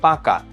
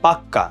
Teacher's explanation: কখনো কখনো জোর দেওয়ার জন্য আমরা যেটা করি যে শব্দের অন্তর্গত যেই ব্যঞ্জনটা এটাকে দ্বিত্ব করি, মানে এটাকে দুইবার আনি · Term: ব্যঞ্জন দ্বিত্ব